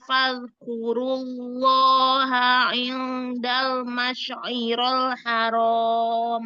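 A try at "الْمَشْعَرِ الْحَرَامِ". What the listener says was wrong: Masy'aril, kebalik itu.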